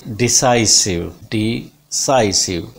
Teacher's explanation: Primary stress is on sa sound here.